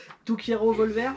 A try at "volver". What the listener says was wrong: C'est pas Volver, c'est Bolber. Bolber.